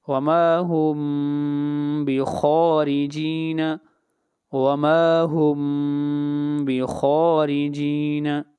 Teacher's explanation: وَمَا هُمْ یہاں پر میم ساکن کے بعد با ہے، میم کو غنہ کے ذریعے اخفاء کے ساتھ پڑھیں گے